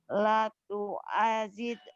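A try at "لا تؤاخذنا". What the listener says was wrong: La-nya panjang. Bukan tuh ajid. Titiknya di bawah apa di Di atas ya tingginya, di bawah mah jim. Ini kha. La tu'akhidna.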